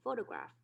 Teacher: we know the stress is here at the very beginning for the first syllable